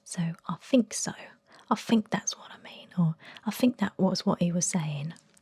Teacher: in Essex kind of pronunciation, you basically drop the TH and replace it with a F in pretty much all words